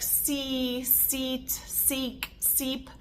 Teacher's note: the jaw stays closed the tongue stays retracted for all of those sounds